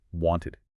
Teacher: the ID sound for words that already end in a T or D